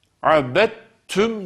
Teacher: dal harfi ta harfine idgam edilerek abet tüm şeklinde şeddeli ymiş gibi okunmaktadır bu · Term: idğam-ı mütecaniseyn